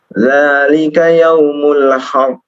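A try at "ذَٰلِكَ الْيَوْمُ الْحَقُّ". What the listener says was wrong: Ada alif lamnya. Dzalikal yaumul haqq.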